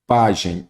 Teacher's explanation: Pajem, ela é uma paroxítona, que a sílaba tônica é o pá, terminada em em.